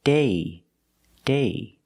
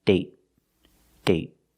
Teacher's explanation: So with date, we see the vowel is shorter because you have a stop T at the end.